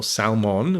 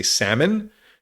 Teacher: We don't say the L.